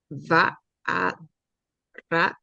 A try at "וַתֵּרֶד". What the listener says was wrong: You skipped over this tav too. Vatered.